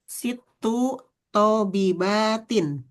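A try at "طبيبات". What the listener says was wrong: tonya pendek, B-nya yang panjang. Tobibat.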